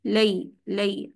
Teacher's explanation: جتنی جگہ بھی آپ لین پڑھ رہے ہیں وصل کرتے ہوئے، آپ نے اس کو لیندی نہیں کرنا، لمبا نہیں کرنا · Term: حرف لین